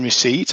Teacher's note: you don't say the p in receipt although it's written in the spelling